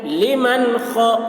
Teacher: نون ساکن کے بعد حروف حلقی میں سے خ آ رہا ہے، نون کی آواز کو ظاہر کر کے بلا غنہ کے جلد پڑھیں گے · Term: اظہار